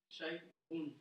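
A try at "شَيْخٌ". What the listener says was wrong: Shay quoi? C'est le rein là? C'est le kha. Shaykhun. Kha. Dis kha. Khou. Khi. Voilà, faut bien appuyer. Shaykhun. Shaykhun. Shaykhun.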